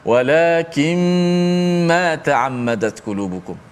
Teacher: Walakin asalnya nun mati. Walakin jumpa dengan mim, nun tu masuk dalam mim. Walakin tutup mulut terus, senang.